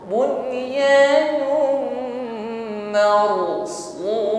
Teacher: Bunyanum takrir, ya, harus ada getaran pada huruf ra-nya, irti'ad tarful lisan.